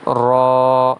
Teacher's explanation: را کی ادائیگی میں الف ہے اسی لیے اسے کھینچ کے پڑھا جائے گا ایک الف کے برابر